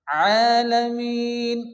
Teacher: আর আইন আমাদেরকে সহিহ ও শুদ্ধ উচ্চারণ করতে হবে। অনেকে আছে আইনের জায়গায় হামজা পড়ে, হামজা পড়া যাবে না, আ পড়া যাবে না, গলাটা একটু হালকা চাপিয়ে উচ্চারণ করতে হবে। আলামিন, এখানে মিম ইয়ার নিচে কি আছে ইয়া মাদ্দা আছে, এখানে এক আলিফ পরিমাণ টান দিয়ে পড়তে হবে।